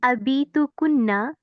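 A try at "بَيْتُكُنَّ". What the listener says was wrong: बैतु कुन्ना, बैतु बीतु नहीं है, बैतु कुन्ना करीबुन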